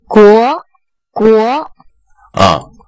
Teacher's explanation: 国它越往后的时候，越往后的时候要把它的声音变大，也就是音强变强 ，国不是国，最后就弱了，是国国。来，国国，它不是国国，是一直推